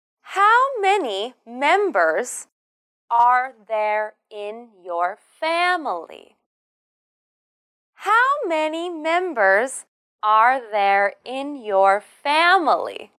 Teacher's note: you should emphasize and they are how many members and family this is a question beginning with how so your voice should go down at the end